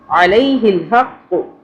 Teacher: ہا کو بھی حلق سے پڑھنا ہے اور قاف کو بھی موٹا پڑھنا ہے ، قاف، کاف باریک والا نہیں پڑھنا، علیہ الحق، سین زبر